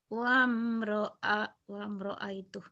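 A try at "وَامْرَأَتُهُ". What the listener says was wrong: kenapa jadi ai tuh? Ai dapat dari mana ainya?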